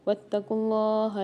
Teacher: یہاں پر اللہ کے لام کو موٹا کر کے پڑھیں گے اور کھینچ کے بھی پڑھیں گے